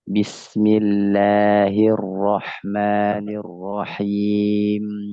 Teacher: ketika mim nirrajim misalnya arrahmanirrahim cukup di dua bibir jangan sampai masuk ke dalam-dalamnya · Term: Huruf bibir